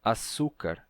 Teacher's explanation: ces dilia ele terminou tendo um som de s de um um som como um s não chiado